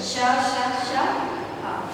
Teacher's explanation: इनका उच्चारण स्थान ऊष्म है। ऊष्म मतलब जिन वर्णों के उच्चारण करते समय ऊष्मा उत्पन्न होती है, मतलब थोड़ा सा घर्षण होता है, उसको ऊष्म वर्ण कहते हैं।